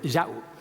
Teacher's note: glottal stop, a sharp break in the word